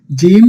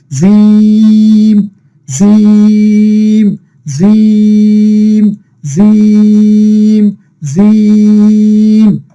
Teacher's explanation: জিহ্বার মধ্যখান থেকে একটু শক্ত করে উচ্চারণ করতে হবে